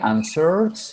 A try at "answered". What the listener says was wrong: Que sonar la T. Answered. Tiene que sonar la T. Usted dice answer y answered.